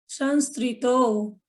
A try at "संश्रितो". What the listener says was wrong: संश्रितो। हाँ, देखिए आप श्री पढ़ रहे हो, ये जो श्री है ना, ये श्री नहीं है, श शक्कर वाला श है। तो श्रितो, सम श्रितो।